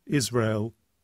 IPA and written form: ˈɪz.reɪ.əl (Israel)